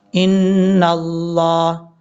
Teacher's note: نون کے اوپر شد غنہ کریں گے، ایک الف کی مقدار. لفظ اللہ ہے یہ، اس سے پہلے زبر ہے نون کے اوپر، تو یہاں پر لفظ اللہ کو پر پڑھیں گے.